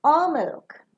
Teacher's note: The last alternative that you are providing will fall down.